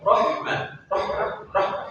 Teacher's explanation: nafasnya keluar tapi suaranya tertahan